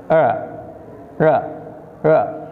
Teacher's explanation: Yang terakhir dibacanya R, tapi dibacanya seperti tidak nempel R-nya ke langit-langit atas.